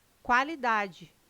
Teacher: O QU não é dígrafo, não é pronunciado com um som único. O quá traz um ditongo, dois sons UA.